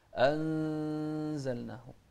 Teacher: نون ساكنة أتى بعدها زاي وحرف الزاي من أحرف الإخفاء